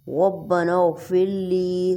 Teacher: لی کو تھوڑا سا کھینچیں گے یا کی وجہ سے